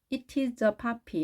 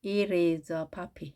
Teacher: 이 T 소리가 양쪽에 모음이 있게 되면 R 발음하는 거 우리 배웠죠? 따라서 it is a puppy 이렇게 딱딱하게 발음하지 마시고 it is a puppy 이렇게 연음이라고 합니다.